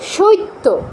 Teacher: এই ইফলার ইটা ত এর আগে নিয়ে এসে তকে দ্বিত করে দেই ডাবল করে দেই